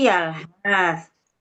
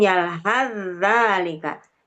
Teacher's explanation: cara membacanya kan itu dilebur sa ke za, jadi yalhazalika ketika disambung. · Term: idgham mutajanisain